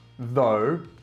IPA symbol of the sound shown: ð